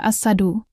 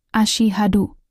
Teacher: pastikan huruf H diucapkan dengan jelas dari tenggorokan bagian tengah, dan huruf shin dilafalkan dengan benar